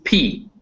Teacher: word it just means bi just means two labial means lips bilabial means both your lips and a stop means you completely stop the air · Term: voiceless bilabial stop